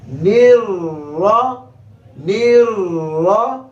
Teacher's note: نون کو را سے ملائیں گے، را کے اوپر زبر ہے، را کو موٹا کریں گے